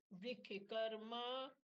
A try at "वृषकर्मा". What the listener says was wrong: श पूरा बोलिए वृषकर्मा हाँ हम ऋषभ बोलते हैं ना, ऋषभ श पूरा बोलते हैं ना, ऋषभ ऐसे नहीं बोलते हैं। तो वृषभ वृषकर्मा वैसे श पूरा।